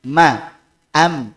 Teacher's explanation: karena alasan yang pertama dari segi definisi bahwa iqlab itu artinya mengubah yang tadinya n jadi m dan itu tidaklah terealisasi kecuali dengan menempelkan kedua bibir